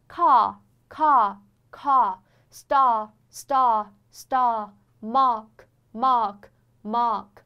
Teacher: 方，耳朵下面这个地方，就是你上下颌骨的衔接处这个关节，你要感觉到它是这个关节，你要感觉到它是张开了的。这个关节的地方是张开的，所以说就是有点像美声的这样一个感觉。 然后舌位是自然后缩，它是一个后元音。